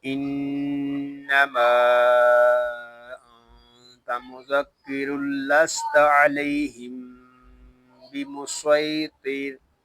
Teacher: हम रा को लाम के साथ मिलाकर पढ़ते हैं तो फिर यहाँ पे इदगाम यरमालून बिला गुन्ना होगा